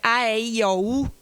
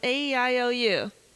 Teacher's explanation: elas são muito abertas. Já no inglês não, elas são mais horizontais porque eu falo meio que sorrindo.